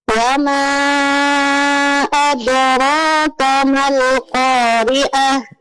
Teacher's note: jangan lupa berhenti pada ta marbuthah, ganti menjadi ha sukun, jelaskan ya